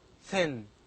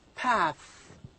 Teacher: thin and the final sound of path are both voiceless so these sounds are voiceless they do not make vibration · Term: voiceless dental sounds